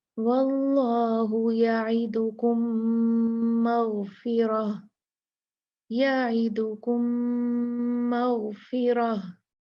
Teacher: तो जब दो मीम आपस में मिलेंगे तो गुन्ना भी तो शदीद होगा, तो अच्छे से इसमें गुन्ना करना है।